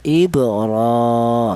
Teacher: Alasannya ada huruf ra yang berharakat berdiri. Dibaca mad thabi'i yaitu panjangnya satu alif atau dua harakat atau dua ketukan. · Di mana huruf ra berharakat fathah ini ada dua bacaan. Yang pertama dibaca tafhim, alasannya huruf ra berharakat fathah. Bacaan kedua dibaca mad thobi'i.